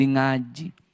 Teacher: Orang Jawa nggak bisa bilang ka, jadi yang mengaji, lama-lama jadi ngaji.